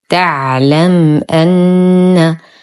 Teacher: ميم ساكنة وبعدها الهمز في كلمتين، الحكم إظهار شفوي